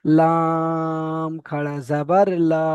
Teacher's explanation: লাম অক্ষরটায় তিন আলিফ পরিমাণ টান দিয়ে বলতে হবে